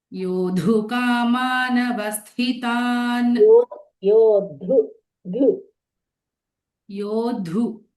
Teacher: That is Samyuktaksharam. First letter is Alpa Pranam and followed by Mahaprana.